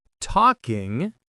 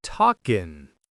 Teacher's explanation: Then, talking drops the final /g/.